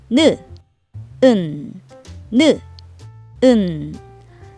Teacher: 느를 말할 때와 반대로 혀를 움직여서 소리내요. 내려져 있는 혀를 움직여서 혀끝을 윗니 뒤에 붙이면서 소리내요. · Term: 니은의 끝소리